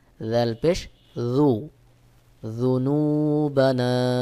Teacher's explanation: আপনার জিব্বার আগা সামনের 2 দাঁতের আগার সঙ্গে লাগায়া মুখ গোল করে উচ্চারণ হবে